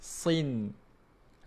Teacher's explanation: Kita gunakan bahagian hadapan lidah ni. Bahagian depan lidah ni menyentuh pada gusi gigi kacip atas. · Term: huruf nun